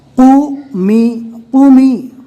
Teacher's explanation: قومی، قومی، قوف کو پور پڑھنا ہے اور میم کے نیچے زیر ہے اور قوف کے اوپر پیش ہے، تو قوف کے اندر ہونٹ گول کر کے پیش کو ادا کرنا ہے، پھر اس کے بعد آواز کو تھوڑا دبا کر زیر پڑھنا ہے